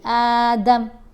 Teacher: وقف کریں گے نا تو میم کے اوپر زبر نہیں پڑی جائے گی